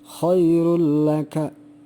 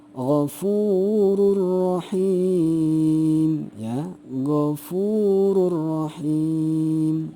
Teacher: bacanya adalah tidak disertai dengung tapi langsung dilebur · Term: idgham bila guna